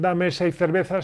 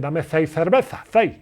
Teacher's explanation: la andaluza dice el seis de una manera un poco particular ellos no dicen Dame seis cervezas si no dicen Dame ci cerveza ci casi con z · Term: acento que tienen los andaluces